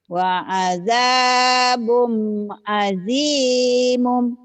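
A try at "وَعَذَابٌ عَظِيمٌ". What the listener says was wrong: wa azabun azimun. Azimun jangan azimum.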